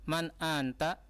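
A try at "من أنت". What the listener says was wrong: Nah, kenapa di anta? Kenapa ditekan? La, man anta?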